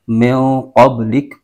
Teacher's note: تو یہ جیم کی علامت نظر آ رہی ہے، یہ وقف مجوز ہے، تو یہاں پر ٹھہرنا بھی جائز ہے اور ملا کر بھی پڑھ سکتے ہیں. تو یہاں پر رکیں گے تو آخری جو حرف ہے کاف، اس کی جو زبر ہے وہ ختم ہو جائے گی اور یہ ساکن ہو جائے گا. من قبلک، تو یہاں وقف کریں گے تو من قبلک پڑھیں گے، اور وقف اگر نہیں کرتے ملا کر پڑھتے ہیں تو کاف کی زبر پڑھیں گے.